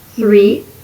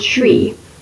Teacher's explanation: many italian speakers also tend to struggle with the th sound often leading to the incorrect substitution of t or d sounds